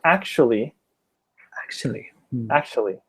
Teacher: I know that when it's written actually, it looks like 4 syllables. But in practice, when you speak it, you only use 3.